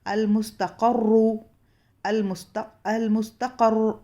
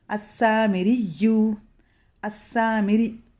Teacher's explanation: را پر شدہ پڑھا جائے گا اور صرف اس کی حرکت نہیں پڑھی جائے گی